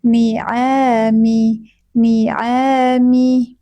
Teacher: Bukan bukan dari hidung, tapi dari tenggorokan bagian tengah.